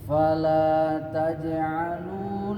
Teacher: Jadi ketika fala ini perhatikan jim qalqalahnya ini jangan terlalu kuat. Ketika taj'alu ini wawnya ini 2 ketuk Pak ya, baca.